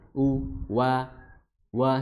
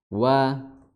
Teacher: huruf wau makhrajnya adalah di kedua bibir disertai dengan menyunyuk atau munyuk ya maju ya u wa seperti itu wa.